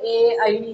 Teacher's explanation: कंठ अधिक तालू याचा उपयोग ए या अक्षरांचा उच्चारण करण्यासाठी केला जातो